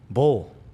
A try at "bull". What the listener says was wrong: Bro, it sounds like you're saying bowl. Bull.